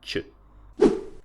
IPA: t͡ʃ